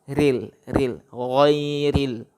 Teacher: lamnya ril, di ujung betul, ya. Ujung lidah dan di ujung langit-langit bagian depan dekat gigi.